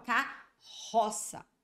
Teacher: eu juntei dois RS mas o som que saiu aqui olha foi o som de apenas um único R Olha aí tá vendo eu não falo k r r o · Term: dígrafo consonantal